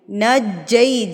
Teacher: جیم کو مضبوطی سے پڑھنا ہے کیونکہ یہاں پہ تشدید ہے. پہلے نون جیم کے ساتھ ملے گا پھر جیم آگے جا کے یا کے ساتھ ملے گا.